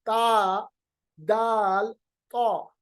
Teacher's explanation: مخرج ہے زبان کی نوک، بالکل زبان کی جو نوک ہے آپ کے سامنے، جو ٹپ آف دا ٹنگ ہے، اس کو ملائیں گے ثنایا اولیا، جو اوپر کے دانت ہے نا ان کے جڑ کی طرف.